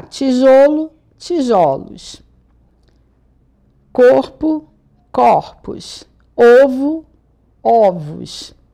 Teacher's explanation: Geralmente o som fechado é no singular. Quando eu vou pro plural, eu uso o som aberto. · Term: mudança de timbre